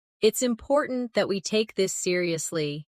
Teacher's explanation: with a lower steady tone